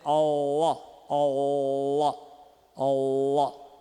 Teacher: Ok, e agora o faringal é aquele que eu falei do árabe, que é a raiz da língua que se retrai em direção à parede posterior da faringe